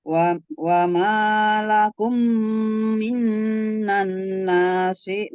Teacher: nun sukun ketemu dengan nun juga itu kan gunnah